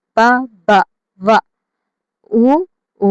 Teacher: ఓష్టాలు అంటే పెదవుల నుండి పుట్టి ఉన్నవి ఓష్టాలు ఇవన్నాయి సెవెన్ ప బ ఊ ఇవి ఓష్టాలు ఎక్కడి నుంచి వస్తాయండి పెదవుల · ఓష్ట్యాలు అంటే పెదవుల నుండి పుట్టి ఉన్నవి ఓష్ట్యాలు